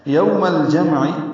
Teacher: یوولین، میم کو لام سے ملا دیں گے